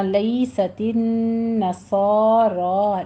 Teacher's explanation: تن میں نون مشدد ہے، غنہ واجبہ کرنا ہے